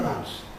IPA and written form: mʌns (months)